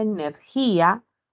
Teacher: se produce una ruptura entre estas dos vocales debido al hiato acentual